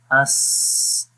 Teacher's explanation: زبان اور تالو کے درمیان معمولی سی جگہ ہے، تو جس سے آواز جو ہے وہ باہر نکلتی ہے، جو کہ اس کے اندر سانس جاری کرتی ہے، اور اس میں اس سی ٹی کی ساؤنڈ بھی اسی طریقے سے اس کے اندر آتی ہے۔ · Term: رخاوت